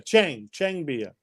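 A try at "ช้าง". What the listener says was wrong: No, it's not Chang. It's Chung. Yeah, the A in Thai language is pronounced the same as in the Italian alphabet.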